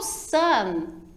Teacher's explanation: Já o sun, a pronúncia da letra N ficou lá também, tua ponta da língua ficou em cima, na parte superior do teu dente